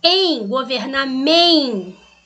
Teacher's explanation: Em, governamento, é um E nasalizado.